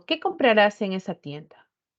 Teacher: en esa pregunta mi entonación será descendente